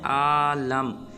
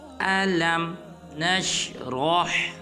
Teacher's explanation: بعض مسلمان پڑھ دیتے ہیں عالم، یہ بالکل غلط ہے۔ نہ حمزہ کو لمبا کرنا ہے نہ لام کو لمبا کرنا ہے، بلکہ لام کو میم ساکن کے ساتھ ملائیں گے